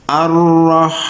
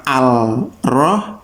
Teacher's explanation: Karena ini di sini ada tasdidnya juga, sehingga kita langsung masuk menekan ke huruf yang ditasdid ya. Jadi ar-roh langsung ya, bukan al-roh tapi ar-roh langsung di ro-nya ya.